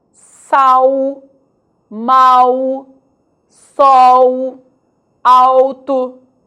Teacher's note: esse desenho L, nessas palavras, tem sim o som do U